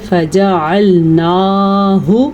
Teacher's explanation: اس کی مقدار چھوٹی ہوتی ہے، اس لیے اس کو ہم پڑھیں گے فجعلناہ، البتہ نون کے اوپر جو کھڑی زبر ہے اس کو کھینچ کے لمبا کر کے پڑھیں گے